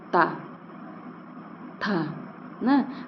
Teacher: बिना दांत में स्पर्श किए इन वर्णों का उच्चारण ही नहीं हो सकता है तो इसलिए इन्हें दंत वर्ण कहते हैं आगे देखिए उ प